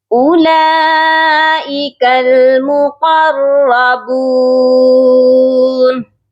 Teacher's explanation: نون کو ساکن کریں گے، نون کے اوپر جو زبر کی حرکت ہے اس کو ہم نہیں پڑھیں گے، یہ پڑھا جائے گا اولئک المقربون۔ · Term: وقف